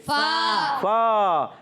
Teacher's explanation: فا اوپر والے دانتوں کے کنارے جب نیچے والے ہونٹ کے تر حصے سے لگتے ہیں تو ادا ہوتا ہے